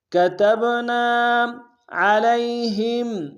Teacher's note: عین کو گہرائی سے ادا کریں گے، لام کو یا کے سامنے لائیں گے، یا لین بغیر کھینچے پڑیں گے.